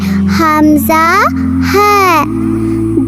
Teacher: 1 number মাখরাজ হলো হলকের শুরু থেকে, এখান থেকে আসে হামজা